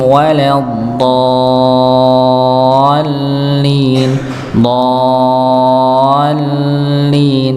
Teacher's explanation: Kalau lam dia mengalir saja tapi nggak ada dengungnya.